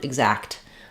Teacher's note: So in exact, we have to say that T sound exact because it's in the KT cluster.